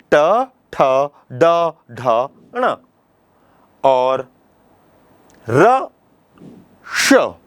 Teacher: इतने वर्णों का उच्चारण मूर्धा से होता है। इसलिए इनको मूर्धन्य वर्ण कहते हैं।